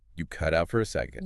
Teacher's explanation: Emphasize the phrasal verb cut out.